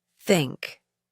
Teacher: In English, there are two types of th sounds. The voiceless, th sound, as in the word think.